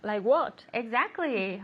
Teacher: even though it's not a question structure we use the intonation to make it a question